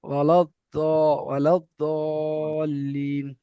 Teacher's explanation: জিভের সাইডের কিনারা, জিভের সাইডের কিনারা, যেটা আপনার সুবিধা হয়, ডান সাইড সুবিধা হতে পারে, বাম সাইড সুবিধা হতে পারে। জিভের সাইডের কিনারাটা উপরের মাড়ির দাঁতের গোড়ার সাথে লাগিয়ে দদ উচ্চারিত হবে